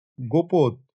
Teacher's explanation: শব্দের একদম শুরুতে থাকা হস্রউকার অনেক সময় ওকার হয়ে যেত। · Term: স্বরধ্বনির বিনিময়